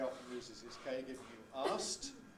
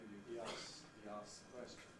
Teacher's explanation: Certainly past tense of asked very often loses its K, giving you asked.